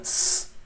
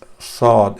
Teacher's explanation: will hear the s, the whistle sound, but with sod you will not hear the whistle sound. It's sod. It's very a blank sound.